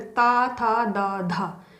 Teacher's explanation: देखिए जिह्वा हमारी जा रही है दांत के मूल में